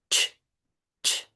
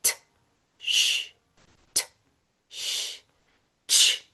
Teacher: They are two sounds pushed together to make one sound. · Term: affricatives